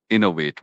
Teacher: You hear that stress on the first syllable.